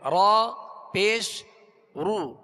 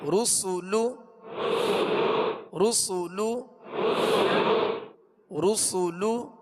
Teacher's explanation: دونوں ہونٹوں کو کامل گول کر کے ادا کریں گے. اگر کامل گول نہیں ہوں گے تو پھر رو سو لو یہ بن جائے گا، اور یہ ہے معروف مجہول طریقہ.